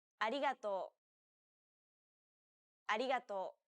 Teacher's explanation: most of the air should go around the sides of your tongue the same way it would when pronouncing an l sound this is why many people describe this sound as in between · way it would when pronouncing an l sound this is why many people describe this sound as in between an r and an l sound